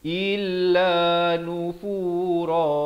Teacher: Hamzah baris kasrah bunyi i, bukan bunyi e.